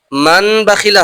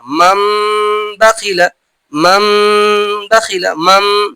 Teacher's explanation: তানবিন বা নুন সাকিনের পরে যদি বা আসে তাহলে তানবিন বা নুন সাকিনকে মিমের মিমের দ্বারা পরিবর্তন করে এক আলিফ পরিমাণ গুণনা সহ পড়তে হয় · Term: ইকলাব